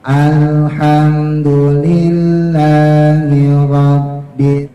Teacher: rnya ujung lidah taruh di atas ya di langit-langit yang keras ya supaya getarannya tidak lebih dari dua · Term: huruf ro hijaiah